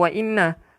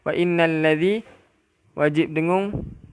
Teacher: Kena buat apa wajibal gunnah? Dengungkanlah 2 harakat